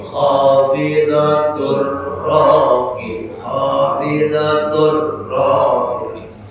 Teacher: Idgham artinya masuk, ya masukkan ke badannya. Ya, enggak boleh baca khafidatun, salah lagi. Masuk ke ra. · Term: Idgham bila guna